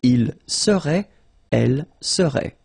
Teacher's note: And then the good news here, it will be exactly the same. So final T is not pronounced.